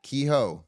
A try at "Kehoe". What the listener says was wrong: Kehoe. Change the H to a Y, sound-wise. Kehoe.